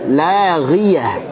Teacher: La tipis dulu, ghi jangan terlalu tebal.